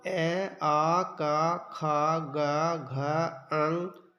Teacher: इन वर्णों का उच्चारण कंठ से होता है